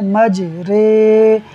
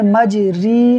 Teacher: را، امالہ والی، رے، مج رے۔ اب ہم نے مج ری نہیں پڑھنا بلکہ ہم نے پڑھنا ہے مج رے، ہا، الف زبر ہا، مج رے ہا۔